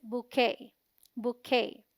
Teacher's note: QUET is the stressed syllable and sounds like K, rhyming with day. T is silent.